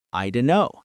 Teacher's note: I don't know often becomes I dunno, with several sounds weakening or dropping. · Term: dropped sounds